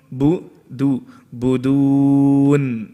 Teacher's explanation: ba is light and dal is light. So you have to stretch the dal out.